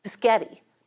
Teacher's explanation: which kids often pronounce as bisgetti, metathesizing the positions of S and P. Or when English speakers want to buy a burrito from the chain called Chipotle, we often metathesize the T and L and say Chipotle, because that TL sequence is rare in English. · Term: metathesis